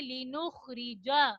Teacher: را کے نیچے زیر ہے, را کو ہم موٹا نہیں پڑھیں گے. لِنُخْرِجَ, لِنُخْری, ری ایسے نہیں پڑھیں گے بلکہ را زیر ری.